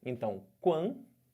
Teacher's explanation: Eu fiquei com o som de duas vogais, do A com o U. Só que esse A, vocês estão vendo que ele está nasalizado, né? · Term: ditongo nasal